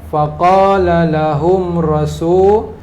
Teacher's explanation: InsyaAllah ayat 13 ada izhar syafawi. Mim mati bertemu dengan ra. Faqala lahum rasul. La lahum, mim mati dengan jelas.